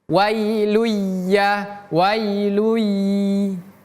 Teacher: bukan wailun tapi langsung melebur, pindah ke huruf ya. Wailun menjadi wailui. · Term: idgham bi gunnah